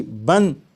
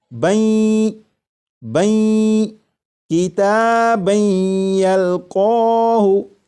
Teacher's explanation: جب تنوین کا یا میں ادغام ہوگا تو درمیان میں جو نون ساکن کی آواز آ رہی ہوگی وہ پھر اس طرح سے آواز نہیں آئے گی بن، بلکہ وہ آواز اس طرح ہوگی بین بین کتابن یلقاہ۔